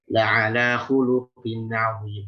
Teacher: khuluqin di sini huruf qaf kasrah itu rentan sekali menjadi kaf. Bukan hanya berubah sifat hams, tapi jadi kaf.